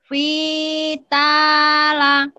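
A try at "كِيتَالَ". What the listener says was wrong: Bukan Iya, ini Ki, bukan Fi ya, Bu ya. Kita la.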